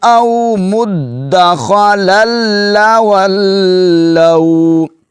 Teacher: دال مشدد ہے, اس کو جماؤ کے ساتھ ادا کریں گے